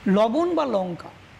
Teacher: উপরের পাটির যে দাঁত, দাঁতের ঠিক পেছনের যে অংশটা, যাকে আমরা চলিত কথায় বলি মাড়ি অর্থাৎ তালু, সেই তালুতে স্পর্শ করছে। অর্থাৎ তালুতে স্পর্শ হয়ে এই ল ধ্বনিটি উচ্চারিত হচ্ছে। তাই একে আমরা বলবো তালব্য ল।